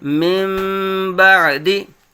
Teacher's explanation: اب ہم ان کو ملائیں گے نا تو پھر نون ساکن کو میم میں بدل کر اخفا کر دیں گے